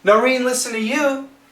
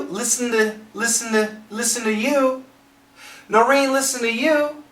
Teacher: But listen's got the N, listen to, the T, the N can cancel the T